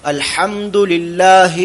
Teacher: ഐനും ഹാവും വസത്തുൽ ഹൽക്കാണ് തൊണ്ടയുടെ മധ്യമാണ് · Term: വസത്തുൽ ഹൽഖ്